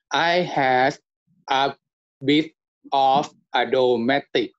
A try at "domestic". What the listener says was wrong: ▁Domestic. ▁Domestic. ▁Domestic. Domestic. ▁This ▁is ▁not ▁a ▁strong ▁k, ▁okay? ▁Domestic.